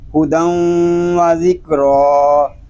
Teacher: یہاں تنوین میں ادغام یار معلوم اس لیے ہو رہا ہے کہ تنوین کے بعد رفع یار معلوم میں سے واو آ گیا ہے. ادغام ناقص اس لیے ہو رہا ہے کہ تنوین کے نون ساکن کی جو صفت ہے وہ باقی ہے. را اس لیے پر ہے کہ را کے اوپر کھڑا زبر آ گیا ہے.